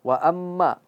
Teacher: Wa amma itu dia gunnah dan masuk ke hidung.